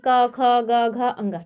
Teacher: आपके ना दांत कहीं स्पर्श होंगे ना होंठ स्पर्श होंगे। नहीं आपके गले से ही आवाज निकलेगी। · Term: क वर्ग